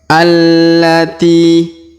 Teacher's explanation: a langsung sambung ke lam ya yang bertasdid